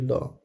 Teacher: पार्श्विक ध्वनि होती है ल। जिन व्यंजनों के उच्चारण में जीभ तालु को छुए किंतु बगल पार्श्व में से हवा निकल जाए उन्हें पार्श्विक व्यंजन कहते हैं।